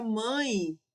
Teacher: Na palavra mãe, o e ele é semivogal, tem som de i também.